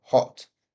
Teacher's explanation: finally we've got the O very round mouth at the front